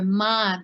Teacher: you will really hear Tibetan say ma with the lengthening of the vowel